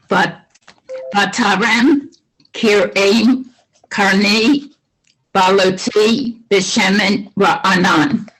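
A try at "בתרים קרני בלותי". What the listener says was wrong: Very nice. Thank you very much.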